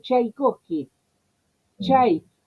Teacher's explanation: Pero fonéticamente tiene el ataque de la T. Entonces como algunos idiomas, como para acercarse a esa pronunciación, le ponen la T adelante, de una manera un tanto análoga a cómo se haría con la fonética.